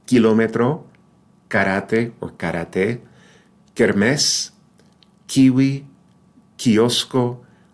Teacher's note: no puff of air in Spanish